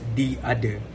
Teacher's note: the voiceless dental fricative th is changed into a t